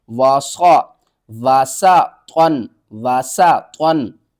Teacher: سین کو سیٹی کی آواز کے ساتھ